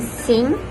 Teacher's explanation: the manner of articulation for phoneme eng is nasal stop, meaning that the airflow is blocked in the mouth but allowed to pass through the nose